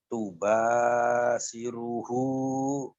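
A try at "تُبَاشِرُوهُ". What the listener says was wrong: Ada hu-nya. Tubashiru. Tubashiru. Tubashiru. Nih penekanannya gitu ya Pak ya. Tubashiru. Penekanan ini ya Bu.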